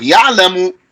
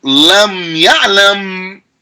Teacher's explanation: the jazm completely omits the vowel. There is no vowel, because sukoon is not a vowel. Sukoon is literally the absence of a vowel.